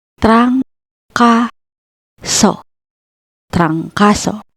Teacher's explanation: Our last example is trancaso, meaning flu. First syllable, trang, consonant cluster TR plus vowel A plus consonant NG, and the second and third syllables, ka and so.